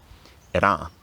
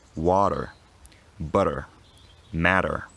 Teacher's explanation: if it comes between a stressed and an unstressed vowel, it becomes a voiced alveolar tap